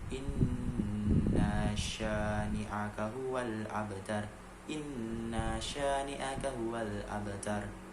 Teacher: Di situ terdapat hukum qalqalah dimana abtar dibacanya tidak terlalu dipantulkan, tapi juga tetap harus ada tekanan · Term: qalqalah sugro